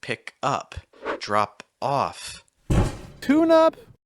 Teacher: Tune up. Notice that the stress falls on the preposition for verbs.